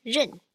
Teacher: this is in the fourth tone as you can see it's a high falling tone